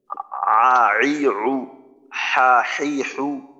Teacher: মাখরাজটা হলকের মধ্যখান থেকে আইন হা